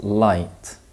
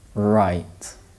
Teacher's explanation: remember to touch the ridge of the mouth with the tip of the tongue when you produce the LA sound